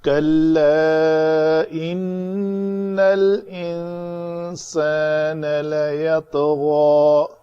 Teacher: ان نون مشدد ہے، غنہ ہوگا، سخت ہوگا، اور انسان کے نون کے اوپر یہ اخفا ہوگا. یہ قدرے نرم آواز آنی چاہیے.